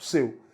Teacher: Seu traz uma pronúncia fechada do E.